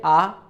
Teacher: खुद देखिए आ तो जब आप में आंख उच्चारण किया तो मुख पूरा क्या है खुला है मतलब वायु के मार्ग में कोई बाधा नहीं है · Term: स्वर